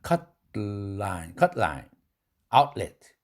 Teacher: 약한 모음 앞에서 약하게 쏟아져 나오면서도 기음이 역시 옆구리로 샌다.